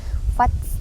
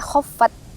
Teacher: hamusnya bunyi sedikit ada suara yang mengalir keluar dikit